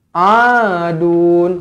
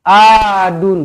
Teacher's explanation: Idhar halqi, jelas dan terang. Adun, huruf ain, tekankan di kerongkong, bukan a.